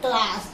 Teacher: यह क पूरा नहीं है, स्वर रहित है, बिना स्वर का